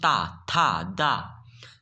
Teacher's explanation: जब भी आप ता बोलते हैं तो जीभ आपकी कहां से टच करती है दांत से टच करती